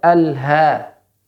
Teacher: Pada ha tempat keluarnya tenggorokan paling ya bawah atau tempat pita suara dan dia benar-benar dilepaskan